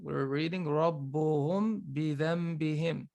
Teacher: This Meem doesn't have any accents, movements on top or below. It's followed by ba. So I have to hide the Meem, and I have to let the sound come from my nose.